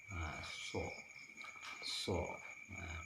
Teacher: Huruf so atau huruf sod seperti huruf sin, namun dia lebih tebal, sedikit dimonyongkan.